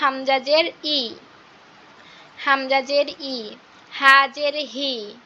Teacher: জেরের উচ্চারণটা বাংলার রস্বইকারের মতো হয়, বাংলার রস্বইকারের মতো উচ্চারণ হয় জেরের উচ্চারণটা।